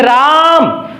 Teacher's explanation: जो राम बोला गया तो रा और मा के बीच में इतना ज्यादा समय लगा, इसीलिए इसे त्रिमात्रिक और इसी को प्लुत स्वर कहते हैं